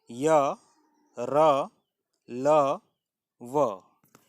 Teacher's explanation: अंतस्थ का अर्थ है स्वर और व्यंजन के बीच में। इनका उच्चारण जीभ, तालु, दांत और होंठों के निकट आने से होता है। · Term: अंतस्थ व्यंजन